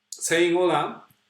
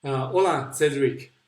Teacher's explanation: we don't pronounce that H in Spanish